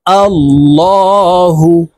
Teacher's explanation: এখানে আল্লাহ শব্দের আগের হরফে জবর আছে তাই এই লামকে ল অর্থাৎ মোটা করে পড়তে হবে